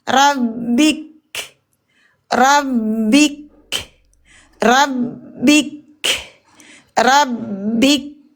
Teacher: Kita sukunkan huruf kafnya tidak boleh dipanjangkan bin-nya. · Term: Waqaf sahih hukum izhar, wakaf di huruf kaf